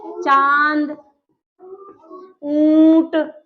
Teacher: का तो हो की धनी आई है इसमें क्या होता है जब हम उच्चारण करते हैं तो ध्वनि मुख और नाक दोनों से आई है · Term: अनुनासिक